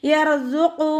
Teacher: ഖാഫ് ഇസ്തിഅലാൻ്റെ ലെറ്ററാണ്. നാവിൻ്റെ ബാക്ക് നന്നായിട്ട് മുകളിലേക്ക് പൊക്കി കൊടുത്തിട്ട് തഫ്ഹീം ചെയ്യുക.